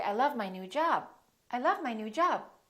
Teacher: you can hold the B, you can hold the stop